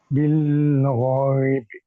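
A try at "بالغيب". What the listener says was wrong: বিল, এরকম বেশি ধরে রাখা যাবে না। বিল গায়বে।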